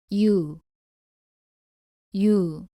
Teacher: 발음은 이로 시작해서 빠르게 우로 이어서 발음합니다